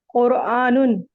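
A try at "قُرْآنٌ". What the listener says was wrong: Very well done माशाल्लाह, बहुत अच्छे, एक्सीलेंट।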